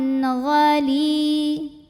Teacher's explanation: ada ya sukun yang didahului baris kasrah. Maka cara bacanya dipanjangkan lamnya dua harokat. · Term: mad tabi'i zahiri